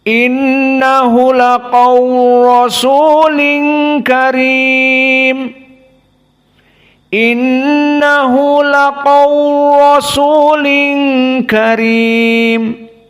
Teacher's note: Karena lam makhrajnya sama dari atraful lisan, maka di sini diidghamkan kepada harf ra, dan idghamnya di sini tidak dibaca lam sama sekali. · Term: al-idgham al-kabir